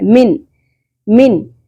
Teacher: نون ساکن کی ساؤنڈ کو کلیئر کر کے پڑھیں گے، اس طرح چھپانا نہیں ہے۔ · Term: اظہار